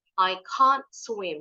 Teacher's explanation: kalau orang Amerika t di belakang selama enggak ada kata berikutnya nih enggak pernah bunyi enggak pernah jelas dibunyiin